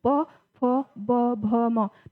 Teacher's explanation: तो हमारे जो दोनों जो होठ हैं वो जो है कि टच करते हैं। बिना हम दोनों होठों को टच कराए हम प, फ, ब, भ नहीं बोल सकते हैं। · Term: ओष्ठय व्यंजन